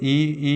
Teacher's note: जो जीभ के आगे से बोला जाता है वो जो है ई हो गया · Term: अग्रस्वर